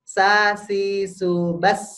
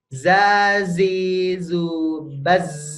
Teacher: Kalau sa ditiup. Ya. Kalau za digetarkan.